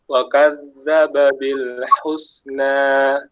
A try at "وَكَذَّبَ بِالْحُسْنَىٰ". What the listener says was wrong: Dalnya lebih tipis, lebih dijaga sifat rafa'nya teman. Wa kadzdzaba, yang wa kadzdzaba jangan seakan-akan seperti syiddah. Wa kadzdzaba yang wa kadzdzaba bil husna. Jadi dia dialirin ya. Ya kan dal itu dia seperti rafa kan. Ya, jadi dia ngalir. Ya, ada aliran udaranya, ada aliran suaranya. Jadi jangan wakadzdzaba. Jadi terlalu ditekan.